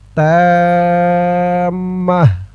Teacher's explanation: থামার কারণে এই তাটা আর তা থাকবে না, হা হয়ে যাবে, হার উচ্চারণ হবে এখানে থামার কারণে।